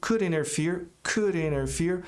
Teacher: A palavra interferir, o verbo, pode ser interfere, mas o americano geralmente não pronuncia esse T